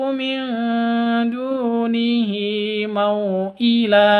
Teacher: nun mati bertemu dengan Dal cara bacanya samar didengungkan